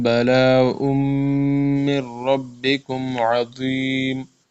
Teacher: بلا میں یہ مد ہے تو بلا اس کو تھوڑا کھینچنا ہے